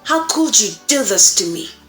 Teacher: we have lower pitch, we have increased volume, and we have a sharper intonation. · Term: anger